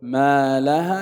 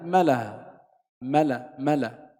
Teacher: بدل أن يقول ما لها يقول ملها، ملا، حذف حرف مد